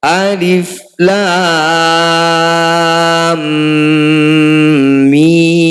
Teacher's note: mim bertasdid disebut bacaan gunah musyaddadah harus dengung bacanya dua harakat